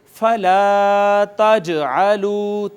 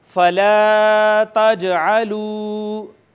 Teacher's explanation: یہ جیم ساکن ہے، لہٰذا یہاں پر آواز لگ کر واپس چلی آئے گی. اور ہم اس کو یوں نہیں پڑھیں گے فلا تجعلوا، نہیں، بلکہ کہیں گے فلا تجعلوا. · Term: قلقلہ